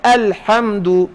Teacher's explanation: جب الف آ جائے اس کو خاص طور پر آپ نے اس کے موٹا کرنے سے بچنا ہے، معمولی سی بھی بو نہ ہے اس میں تفخیم کی